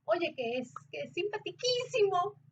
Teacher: es muy normal que cuando estás súper alegre y quieres decir algo oye qué es que es simpatiquísimo subas el tono